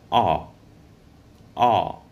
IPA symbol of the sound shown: ɔː